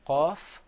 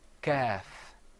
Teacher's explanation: Whereas the kaf is kind of like a K sound. That comes from a little bit closer to the front of your throat.